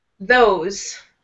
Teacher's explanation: with the TH sound, with TH, your tongue is going to be against your teeth.